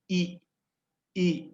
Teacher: ada i-iya Coba ihna bunyi ini terproduksi dari depan ya depan mulut dan mulut kita agak tertutup tertutup ini ih ih coba ih kan terasa ih di depan